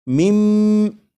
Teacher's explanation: جب نون ساکن کو میم میں ادغام کریں گے تو نون ساکن کی آواز پھر نہیں آئے گی، بلکہ میم کے بعد میم کی آواز آئے گی، اور یہاں پر غنہ بھی کریں گے اور اسے پڑھیں گے مم مثلیہ۔